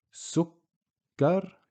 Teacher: If we didn't use the shaddi, you can see a shaddi on top of the kaf. Sukkar, you can hear the kaf being pronounced twice